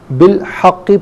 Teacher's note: ملا کر پڑھنے کی صورت میں با کو لام کے ساتھ ملائیں گے، درمیان سے الف یعنی حمزہ کو حذف کیا جائے گا، بالحق پڑھیں گے، وقف کی صورت میں بالحق پڑھا جائے گا۔